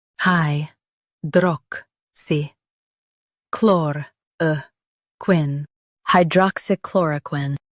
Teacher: Focus on chlor and keep quin light.